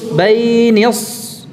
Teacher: dilatih mengucapkan shad sukun dalam keadaan tebal.